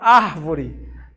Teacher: A palavra árvore, ar é a sílaba mais forte, né?